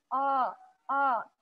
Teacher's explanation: sudah membuka posisi bibir tapi lidahnya naik suaranya tetap akan menjadi tebal